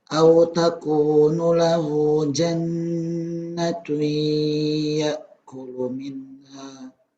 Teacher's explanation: Hu-nya panjang, nun-nya enggak panjang.